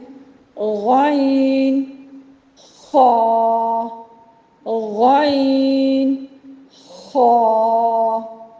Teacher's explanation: غین اور خا ایسے 2 حروف ہیں جن کی ادائیگی میں ہمارے حلق سے خراش پڑتی ہے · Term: ادنیٰ حلق